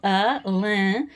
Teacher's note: it's the Portuguese nasalization of the vowel